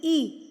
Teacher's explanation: اب یہاں پر دیکھیں کہ یا سے پہلے زبر ہے نا، تو یہاں پہ لے نے پڑھ رہے ہوتے ہیں نا، لے تو لے نہیں ہے، لئی ہے، ای. یا کی ساؤنڈ ہے ڈبل ای، ای. آپ کے ہونٹ اسمائل کی طرح پھیل جائیں گے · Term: یا لین